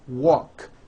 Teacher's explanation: The word walk, which has an unvoiced K sound at the end, walk, becomes walked.